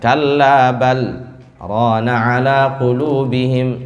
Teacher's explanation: Jadi sama seperti waqaf, tetapi kita itu tidak nafas. Kita itu tidak nafas dan lebih pendek temponya. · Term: sakt